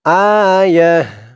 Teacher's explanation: এখানে দেখুন এই তো চিহ্নতে আমি থেমেছি, থামার কারণে এই গুলতাকে হা উচ্চারণ করেছি। অক্ফ করার সময়, থামার সময় যদি গুলতা থাকে সেই গুলতাকে হা বলতে হয়, হা উচ্চারণ করতে হয়। আয়াহ, থামার কারণে তাকে হা বলেছি, তারপরে তার উপরে 2 জবর তানবিনকে সাকিন করেছি।